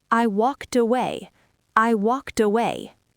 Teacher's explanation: Take the T from walked and push it onto away.